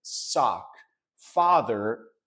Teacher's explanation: for me father and lot fall into the same category